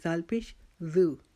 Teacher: دال کو جیسے ہم نے 3 نقطوں والی سا کو ادا کیا تھا کہ زبان کا سرا سامنے والے 2 دانتوں کا اندر کا کنارہ اس پر رکھیں گے اور پھر زال کو نرمی سے ادا کریں گے